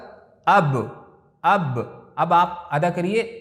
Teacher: अब देखिए बा कहाँ से निकल रहा है, आपको पता चल गया कि दोनों होठ के मिलने से बा निकल रहा है